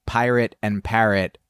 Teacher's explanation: the final vowel is a schwa, and the first vowel is really the only one that is different